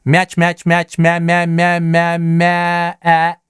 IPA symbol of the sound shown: æ